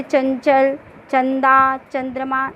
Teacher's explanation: इसका उच्चारण करते समय ध्वनि जो है नाक से निकलती है, जैसे चंचल, चंदा, चंद्रमा, नाक से उच्चारण हो रहा है ना, नाक से ध्वनि बाहर निकल रही है। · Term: अनुस्वार